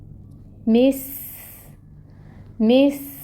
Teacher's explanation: سین کی صفت واضح کریں جس میں سیٹی ہوتی ہے۔